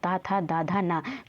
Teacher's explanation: जिसका उच्चारण ऊपर के दांतों पर जीभ लगने से होता है तो उसे बोलते हैं दंत · ता था दा धा ना, तो ये दांत से बोले जाते हैं। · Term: दंत वर्ण